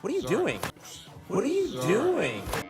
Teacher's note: the T sound from what turns into a D sound before the vowel · U is reduced to ya. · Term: connected speech